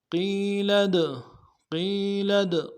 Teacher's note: لام کو آگے دال کے ساتھ ملانا ہے، دال حروف قلقلہ میں سے قلقلہ کریں گے۔